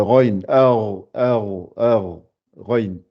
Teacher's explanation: Elle se prononce au début de la gorge. C'est la même sortie que le Kha. Kha et Raïn, c'est le même endroit.